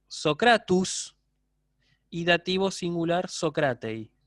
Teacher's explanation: Ahí lo que ocurre es que debería decir Socratesos, Socratesi, pero cae la sigma intervocálica, ¿sí? Y queda ese diptongo como resultado